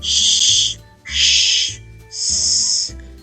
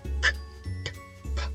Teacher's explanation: these consonants allow the flow of air, sh, sh, s, as opposed to plosives, k, t, p, where the flow of air is restricted.